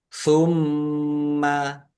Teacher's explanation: mim tasdid dibaca hunah atau mendengung